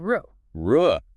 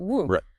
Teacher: Both of those sounds require the exact same slight protrusion and rounding of your lips.